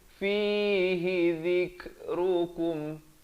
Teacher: Fihi zikrukum, kum bukan zikrukum, beza kum dengan kum. Kaf baris dhammah bunyi ku, bukan bunyi ko.